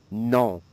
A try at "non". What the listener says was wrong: One more time, a bit more nasal in the back of the nose and throat.